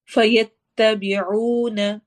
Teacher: جب بھی واو ساکن سے پہلے پیش آ رہی ہو، ضمہ جس کو عربک میں کہتے ہیں، وہ آ رہی ہو تو ہم نے واو کو بھی 2 حرکہ لمبا کر کے پڑھنا ہوتا ہے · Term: واو مدہ